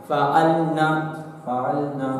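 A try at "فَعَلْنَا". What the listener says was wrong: सिर्फ नून मफ्तूह, नून पर ज़बर, अलिफ नहीं।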